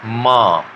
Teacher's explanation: और उसके बाद में म, तो म में क्या होता है, जब हम म साउंड को प्रोड्यूस करते हैं, हिंदी का जो म साउंड है, तो म उसमें दोनों लिप्स आपस में खुलते हैं और एयर को नोज से, नेजल कैविटी से बाहर निकलने में मदद करता है। म इन प्रकार के जो वावल साउंड है, तो वावल साउंड को भी प्रोड्यूस करने में लिप मदद करता है।